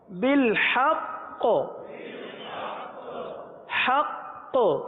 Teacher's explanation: اگر یہاں قلقلہ مشدد نہ کیا تو قاف حذف ہو جائے گی